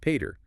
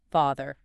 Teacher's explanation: that P consistently softens into an F sound. So per becomes >> father. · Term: sound shift